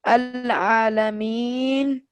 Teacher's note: موقوف علیہ مکمل. مکمل ساکن کر دیا جاتا ہے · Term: وقف بالاسکان